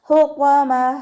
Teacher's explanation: ത മർബൂത്തയിൽ നിർത്തുമ്പോൾ നമ്മൾ ഹാ സുക്കൂന് കൊടുത്തിട്ട് നിർത്താം.